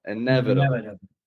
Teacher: It's got one of those flap T's, real light and quick in the middle.